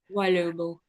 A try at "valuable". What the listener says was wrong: Yeah, it's a little bit W-like at the beginning when I hear you saying it, and it's just it's a very strong V sound. Yeah, valuable, valuable. So I'm saying val, and when I get to the U, I'm actually saying you. saying val, you, able. That's sort of what I'm saying. Valuable, valuable.